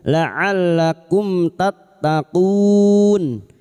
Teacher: Idhar syafawi. Mim sukun dibaca jelas tanpa mendengung.